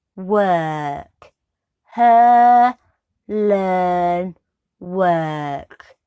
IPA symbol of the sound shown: з: